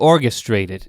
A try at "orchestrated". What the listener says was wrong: or orchestrated. It's been both. You used a G. Yeah, it's orchestrated, but it's cool. I mean, both work.